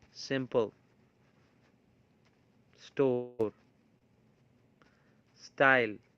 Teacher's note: is a kind of um whistle kind of friction you know the airflow is produced or is forced through a narrow gap between the tongue and the alveolar Ridge